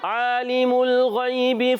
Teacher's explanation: عین کا مخرج حلق کے درمیان والا حصہ، عین پر کھڑا زبر ہے، ایک الف کھینچنا ہے۔